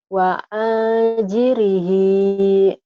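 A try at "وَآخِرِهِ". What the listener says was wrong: Salah titiknya. Titik di atas aun.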